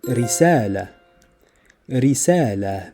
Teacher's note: a rolled R sound like in risala